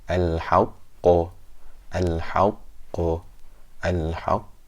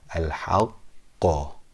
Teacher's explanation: the bounce was very strong. I held it and then I released it. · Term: qalqalah